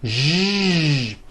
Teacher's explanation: To produce this sound, first make a sh sound, and then you add voicing. Sh, zh, like that. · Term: voiced SH sound